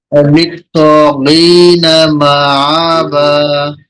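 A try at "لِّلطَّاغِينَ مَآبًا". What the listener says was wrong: এই যে মা এটা আইন হয়ে যাচ্ছে না একটু? হ্যাঁ, আইনটা হবে না। মা বা।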